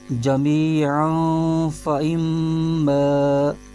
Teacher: تنوین کے آگے فا آ رہا ہے جو کہ حروف اخفا میں سے ہے، تو یہاں پر اخفا کا قاعدہ ہوگا، تو اخفا کا قاعدہ ہونے کی وجہ سے یہاں پر غنہ بھی ہوگا، اور اس کی آواز یوں ہوگی، جمیعاً فَإِمَّا۔